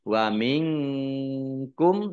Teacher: nun sukun bertemu dengan huruf Kaf bacaan Ikhfa dibaca samar-samar